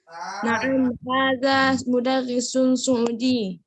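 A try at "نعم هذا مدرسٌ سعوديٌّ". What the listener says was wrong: Itu kurang penekanan pada kata Suudi. Bukan dipanjangkan, Kak. Ditekan. Suudi. Di. Sama ketika kita bilang Nabi, ya, tentang Nabi Muhammad. An-Nabiyyu Muhammadun sallallahu alaihi wasallam.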